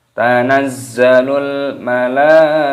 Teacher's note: mad wajib mutasil dipanjangkan 6 harokat.